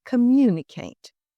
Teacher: We stress the MU.